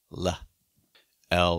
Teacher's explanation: it's like a sharp quick l sometimes called an ejective or a glottalized l